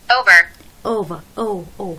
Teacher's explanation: جاي من شوا شورت شوا مع او، يعني اندمج صوت الاي مع الاو · بنلفظها اوفر، نشد على الار كمان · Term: الدفثونج